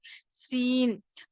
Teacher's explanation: سین زبان کی نوک کو نیچے کے دو دانتوں کے جڑ میں لگانے سے سین ادا ہوتا ہے۔